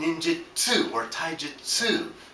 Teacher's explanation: there's no tu sound in Japanese. It's tsu, as in ninjutsu or taijutsu.